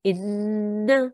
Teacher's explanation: you make a nasal sound on the noon you hold on the noon